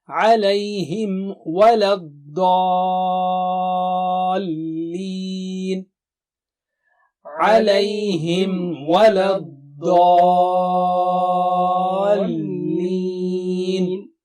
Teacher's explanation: Lips have to be merged out for Mim Sakina and then say wa.